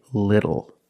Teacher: phonetically the t is between vowels and for this reason the T changes to a fast D in American pronunciation